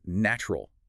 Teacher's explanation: The t and the u combine to create a ch sound. Native speakers pronounce it as natural. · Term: chi sound